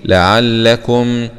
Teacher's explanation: ميم سكون مع الإظهار الشفوي